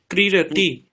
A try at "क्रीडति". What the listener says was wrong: ক্রীড়তি, এটা দেখুন, ক্রীড়তি না, ক্রীড়তি। দীর্ঘ আর হ্রস্বের মধ্যে যদি দুটোকেই আমরা সমান উচ্চারণ করি তাহলে কিন্তু সমস্যা হয়ে গেল। ক্রীড়তিতে আপনি বুঝতে পারবেন না লেখার সময় দীর্ঘ আছে না হ্রস্ব আছে, সেই জন্য ক্রীড়তি।